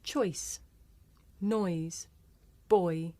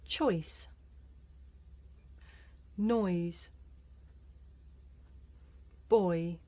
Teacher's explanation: this is a diphthong a double vowel sound the shape the mouth makes changes from the beginning of the word to the end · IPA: ɔɪ